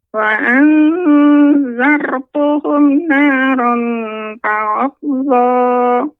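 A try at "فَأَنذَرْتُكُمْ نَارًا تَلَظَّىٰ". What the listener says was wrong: Nah, di sini baru untuk ra yang tebal Nek. Ya, terus latih untuk ra tebal. Fa anzartukum naran talazza. Jadi untuk ra tebalnya ini yang belum Nek ya, terus nanti dilatih Nek. Fa anzartukum naran talazza.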